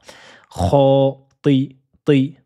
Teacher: Kho, ti, et ensuite la lettre to, à ne pas confondre avec la lettre T. La lettre ta est emphatique et avec sa kasra, il faut lui donner cette emphase, ce caractère grave. Kho, ti. Ne dites pas kho, ti de façon aiguë, mais c'est ti.